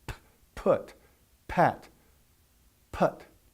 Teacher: no vibration in your throat, and the same mouth configuration for B, you get P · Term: P sound